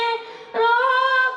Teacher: রায়ের মাখরাজ জিহবার উল্টো পিঠ তার বরাবর উপরে লাগিয়ে র বলতে হবে।